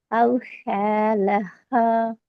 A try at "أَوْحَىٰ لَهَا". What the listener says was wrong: அந்த ஹா பிழையே. கடைசி எழுத்து